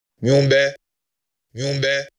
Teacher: So you can clearly hear that the ha is strong and see it on the signal in all these situations. And each time the second syllable is more sonorous